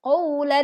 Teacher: tebalkan suara lam pada lafadz Allah